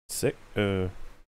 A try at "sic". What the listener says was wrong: Seek, it's Latin, motherfucker. They pronounce the I like an E. It is seek. It is Latin.